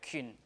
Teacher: this is E sound that you have to round your lips